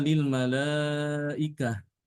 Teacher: ketika wakaf pada kata ini ya tidak boleh dibaca Lil malaikati atau Lil malaikat ya tapi dibaca dengan ha